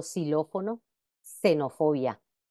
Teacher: En posición inicial de palabra también representa el fonema S, como por ejemplo xilófono, xenofobia.